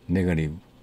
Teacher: 왜냐하면 모음과 모음 사이에 t가 왔기 때문에 이걸 우리는 flap t라고 그럽니다. 모음과 모음 사이에 t가 왔기 때문에 d로 발음을 하는데 빨리 발음하다 보면 혀가 플랩이 돼서 탈랑거려서 R에 가까운 발음이 된다. 그래서 이 T를 세 가지 T의 룰에서 flap T라고 그럽니다.